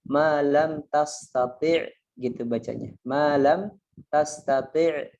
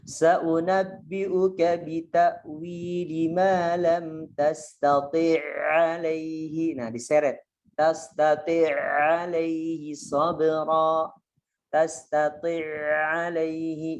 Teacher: jadi bacanya sebagaimana satu huruf ya, satu huruf yang bertasydid. Jadi tastati' alaihi kan gitu, bacanya sebagaimana ain yang bertasydid itu, jadi satu. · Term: idgham mutamatsilain